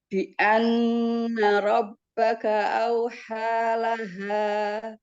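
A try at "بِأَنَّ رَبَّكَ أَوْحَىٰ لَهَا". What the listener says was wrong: Iya, bianna rabbaka, baknya ada 2, jangan kayak huruf P. Rabbaka, jangan rob, tapi rabbaka.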